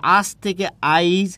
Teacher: মাঝখানে একটা ই চলে আসছে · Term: মধ্য স্বরাগম